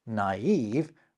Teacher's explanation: you sound each of them out rather than merge them into a single vowel sound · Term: diaeresis